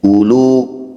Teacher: Dhammah diikuti waw tapi tidak ada sukun, maka waw diabaikan, dianggap tidak ada. U dibaca pendek.